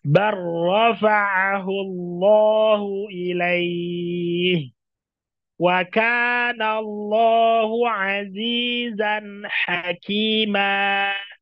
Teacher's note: Huruf pertama dimasukkan ke dalam huruf yang kedua dibaca juga tanpa gunnah.